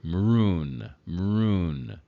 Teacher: there almost is no sound between the m and the r